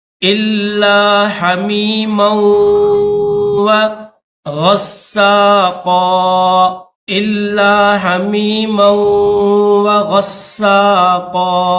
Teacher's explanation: حمزہ کو لام کے ساتھ ملائیں گے